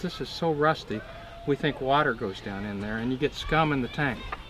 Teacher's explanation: he doesn't put in very many thought groups just one little break here after rusty